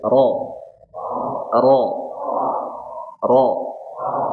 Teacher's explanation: Jangan monyong, jangan ro ro. Cukup dibuka karena fathah.